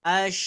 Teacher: keluarnya dari tengah tengah lidah ya Nah di tengah lidah ke langit-langit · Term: huruf synya, sya